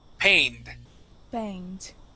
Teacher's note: when it ends with an N and we add a ED at the end, that makes a D sound.